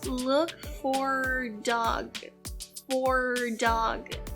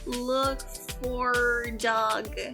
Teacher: especialmente do look for her dog, ele não pronuncia praticamente esse H aqui. Então ela fala look for dog, for dog.